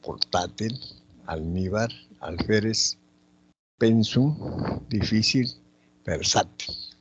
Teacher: Presentan la mayor fuerza de voz en la penúltima sílaba. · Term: graves o llanas